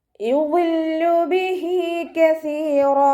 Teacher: വാദ് ഇസ്തിഅലാൻ്റെ ലെറ്ററാണ്, തഫ്ഹീം ചെയ്തിട്ട് ഉച്ചരിക്കുക. ഇത്ബാഖിൻ്റെ ലെറ്ററും കൂടിയാണ്, അപ്പോൾ വാദിന് കെസ്റയായാലും ഉയർത്തിയിട്ട് ഉച്ചരിച്ച് കൊടുക്കുക കേട്ടോ.